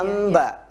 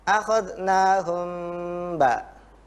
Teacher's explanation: Jadi karena antara mim dengan ba, kalau mim itu makhrajnya ada di bagian bibir agak ke dalam, sementara ba itu adanya di bagian luar, sehingga kalau kita membacanya akhadnahum ditekan, akhadnahum ba, maka hasil huruf ba-nya jadinya emba.